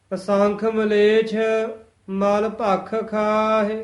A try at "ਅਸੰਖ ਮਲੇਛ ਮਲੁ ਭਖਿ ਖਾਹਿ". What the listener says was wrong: ਮਲੇਸ਼ ਸ਼ਸ਼ੇ ਨਾਲ ਨਹੀਂ ਬੋਲਣਾ ਹੈ, ਛੱਛਾ ਉਚਾਰਨ ਕਰਨਾ ਹੈ। ਅਸੰਖ ਮਲੇਛ ਮਲ ਪੋਲਾ ਬੋਲਣਾ ਹੈ, ਮਲ ਨਹੀਂ ਕਹਿ ਦੇਣਾ। ਅਗਰ ਮਲ ਕਹਿ ਦਿੱਤਾ ਉਹਦਾ ਅਰਥ ਹੈ ਪਹਿਲਵਾਨ ਘੋਲੀ। ਮਲ ਮੈਲ।